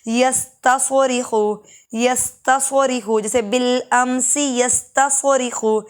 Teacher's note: سین باریک ہوتا ہے سواد موٹا